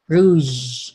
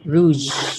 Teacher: a voice oral alveolar fricative